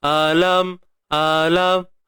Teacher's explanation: huruf hamzah pada atas kita sebut A macam biasa. Ni pangkal kerongkong kita